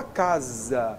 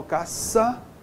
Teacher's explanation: Então esse S, a letra S, na realidade é o fonema Z.